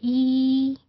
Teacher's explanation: और ई को आप देखें एग्जैक्टली आपके लिप्स की ये पोजीशन जाती है ना कि there is no rounded quality and there is no rounded position at all. और आपकी टंग की भी ई कहीं ऊपर यहीं पे आपको फील हो रही होगी ना, प्रोनाउंस करके इसको देखिए प्रोड्यूस करके।